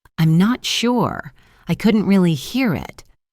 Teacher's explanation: The phrase I couldn't really is spoken quickly. The focus is on sure and hear. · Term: rhythm